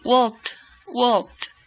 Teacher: you don't use your vocal cords to pronounce the termination · pronuncias la ED sin utilizar tus cuerdas vocales. T, T, T.